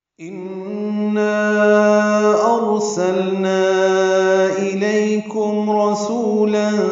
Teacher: ان میں نون مشدد پہ غنہ ہے، آواز ناک کے بعد سے میں لے جا کر 2 حرکات تک ٹھہرائیں گے